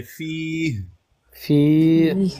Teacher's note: आखिर में अगर वक्फ करेंगे ना, हा की आवाज आनी चाहिए